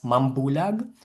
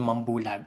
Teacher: So the velar sound in the prefix or the ng becomes m in the prefix. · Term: nasal assimilation